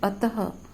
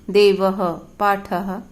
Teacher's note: मुख से ह आधे ह जैसी ध्वनि निकलती है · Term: विसर्ग